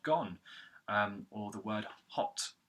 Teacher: The next syllable is go, so you've got the G consonant like in the word gone, and then the O vowel sound, a short O vowel with rounded lips like in the word gone, or the word hot